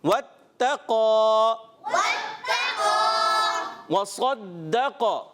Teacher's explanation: صاد کو پر رکھنا ہے، موٹے حروف میں سے ہے